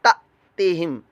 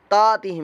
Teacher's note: حمزہ ساکنہ میں جھٹکا پیدا ہوتا ہے, میں قاعدہ بتانا بھول گیا کہ سبق نمبر 11 اور پوائنٹ نمبر 3 کہ حمزہ ساکنہ کو ہمیشہ جھٹکا دے کر پڑھیں گے.